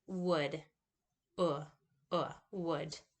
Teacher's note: And it's high, back, lax, and rounded. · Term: upsilon